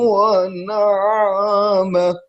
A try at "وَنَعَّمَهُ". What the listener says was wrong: وَنَعَمَ عین کو صاف پڑھیں.